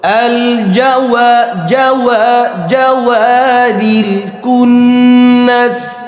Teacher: ওয়াও গোলাবে, একদম ঠোঁট গোলা দেবে। আল জাওয়া জাওয়া জাওয়ারিল কুন্নাস الجوار জাওয়া, ঠোঁট গোলাতে নাকি জাওয়া।